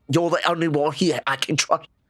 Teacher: she does have a lot of glottal stops in her accent. I've noticed, anyways, which is like going like, "You're the only one here I can trust." Like when you don't like fully say a word, that's a glottal stop.